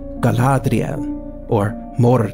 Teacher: elves would naturally roll every R like those in Galadriel